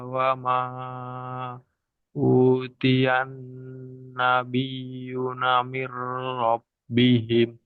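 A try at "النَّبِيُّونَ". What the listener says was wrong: Nabi yuna min rabbihim. Panjang.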